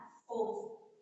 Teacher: ओ, जिसका उच्चारण स्थान कंठ ओष्ठ है।